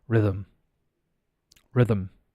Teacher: The TH is pronounced. It's vocalized.